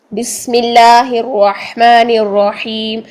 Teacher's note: یہ سین کی سیٹی اور باریک